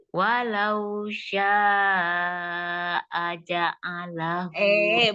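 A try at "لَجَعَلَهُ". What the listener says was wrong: Bukan ja dulu, la dulu, la ja, bukan jala.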